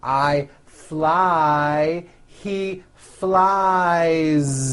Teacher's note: keep that ending voiced